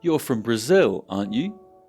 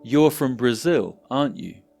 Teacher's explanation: my intonation went up and this suggests that I’m not too sure about the answer